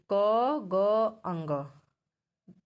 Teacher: वे वर्ण जिनके उच्चारण में कम हवा बाहर आती है उन्हें अल्प प्राण कहते हैं